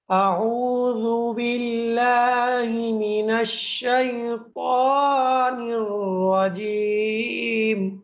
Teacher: এখানে আইন ওয়াও পেশ উ আর জাল পেশ জু এই ২ টা আপনার ১ম টা দীর্ঘ হবে, পরবর্তীটা দীর্ঘ হবে না কিন্তু পড়ার সময় ঠোঁট গোল হবে। তাহলে এই আইন এবং জাল উচ্চারণ করার সময় আপনাকে ২ বার ঠোঁট গোল করতে হবে